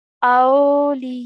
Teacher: making sure we stretch the ya sound for 4 to 6 counts.